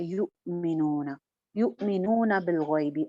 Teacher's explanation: الذین یؤمنون, نون کی زبر آپ کی لمبی نہیں ہونی چاہیے. یؤمنون ہلکا سا یہاں پہ جھٹکا آئے گا کیونکہ یا کے بعد حمزہ آ رہا ہے اور حمزہ سائلنٹ ہے, یعنی حمزہ کے اوپر جزم ہے. · جب جزم آ جاتی ہے, حمزہ سائلنٹ ہوتا ہے, تو اس کے اوپر آواز اور سانس دونوں رک جاتے ہیں